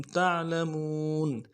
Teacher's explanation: تع میں آواز جا جائے گی. لمون میں واو مدہ ہے، مون میں واو ایک الف مقدار میں کھینچیں گے